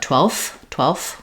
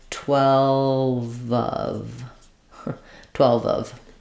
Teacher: of them then it'll sound like 12 of 12 of um your V at the end can kind of jump on to the next vowel